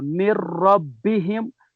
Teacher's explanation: जी दूसरी मिसाल में जो है नून साकिन के बाद हरूफ यरमलून में से रा आ रहा है, इसलिए यहाँ नून और रा को हम मिलाकर पढ़ेंगे, मगर इदगाम बिला गुना होगा